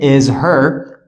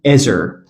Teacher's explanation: We don't say is her, we drop this H and we say is her. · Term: connected speech